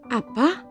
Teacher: Suku kata yang pertama yaitu A. A tentu lebih rendah dibandingkan suku kata yang kedua yaitu Pa. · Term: intonasi